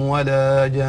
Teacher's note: مد لازم سببه هذا السكون، ثم غنة سببها التشديد. نعم غنة مقدار حركته، فنأتي بهذين الحكمين.